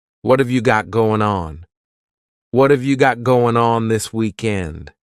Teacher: That final G in the word going is going to be cut off, and we'll just say goin'.